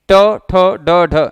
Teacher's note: जीभ पीछे की तरफ फोल्ड हो जाती है, तो जिन वर्णों को बोलते समय जीभ पीछे की तरफ फोल्ड हो जाए वो भी मूर्धा के अंतर्गत आते हैं।